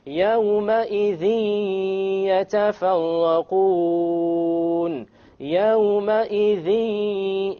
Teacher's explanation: there's a ghunnah, okay? And there is no clear end sound.